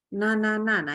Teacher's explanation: adalah mengalir melalui hidungnya dan minimalnya adalah 3 harokat minimal ya 3 roket itu berarti 3 kali kita baca misalkan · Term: ghunnah